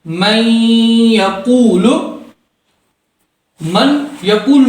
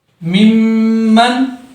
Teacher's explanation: یعنی ادغام مع گنہ کر کے ہم پڑھیں گے۔